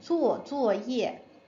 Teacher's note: So remember with 作业, you want it all as fourth tone.